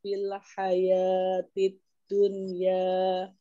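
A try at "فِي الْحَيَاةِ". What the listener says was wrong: Diulang dari fil hayati, lamnya jangan dipantulkan ya fil hayati, tidak fil hayati.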